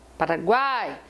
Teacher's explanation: Qual é a tônica da palavra Paraguai? Paraguai. A tônica é o A. O A já é forte.